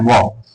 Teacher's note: दंत प्लस ओष्ठ ये मिला के क्या बनेगा? दंतोष्।